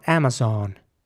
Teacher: So the A at the beginning, first of all, is pronounced like an A, Amazon, and the O is quite round, Amazon. So in British English, it would be more like Amazon, and in American English, Amazon.